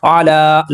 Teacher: لام کے اوپر کھڑا زبر ہے، 2 حرکات کے برابر کھینچیں گے